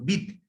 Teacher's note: অর্থাৎ দটা অর্ধভাবে উচ্চারিত হচ্ছে। সেই জন্য সেই দটা পার্টিকুলার ব্যঞ্জন বা খাঁটি ব্যঞ্জন বা বলা যেতে পারে স্বরহীন ব্যঞ্জন।